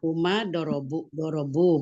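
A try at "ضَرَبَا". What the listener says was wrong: Uma, doroba. Ada alifnya dipanjangkan, Umi? Nah, huma doroba. Nah, kalau hum baru dia dorobu. Kalau huma doroba, ada panjangnya, ada matnya.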